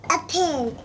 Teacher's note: maybe in her language, the vowels, there is no eh sound, and it's mostly an I sound